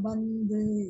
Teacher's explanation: மேல்வாய்ப்பல்லின் அடியை நாக்கின் நுனி பொருந்துவதால் பிறக்கக்கூடிய எழுத்து இத்து இந்து